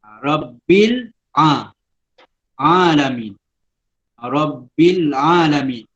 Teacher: Dia ada tasdid, dia jelas. Dalam tasdid tu dia ada satu huruf ba lagi. Ba yang pertama ialah ba yang bertanda sukun, dan yang kedua ialah yang berbaris di bawah yang kita nampak lah.